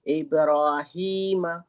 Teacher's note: ये सीने से निकलने वाली छोटी ह है · اس میں بھی ہا جو ہے یہ سینے سے نکلنے والی چھوٹی ہا ہے نا